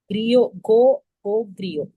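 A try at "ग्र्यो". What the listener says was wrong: கிரியோன்னு சொல்லக்கூடாது, கிரியோ. கிரியோ ஈ கேட்க கூடாது. GRYO அதுதான்.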